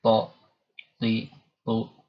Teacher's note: To punya sifat idbaq, lidah, ya, menempel ke langit-langit mulut, ya. Jadi bagian tengah lidah menempel, ya.